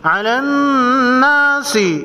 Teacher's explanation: نون مشدد پر غنہ ہوگا۔